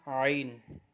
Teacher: عین جو ہے حلق کے درمیان والے حصے سے اس کی آواز آئے گی